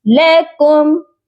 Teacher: ادھر میم ساکن پر غنہ مت کریے گا